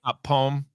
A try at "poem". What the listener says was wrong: It's poem. It's a 2-syllable word.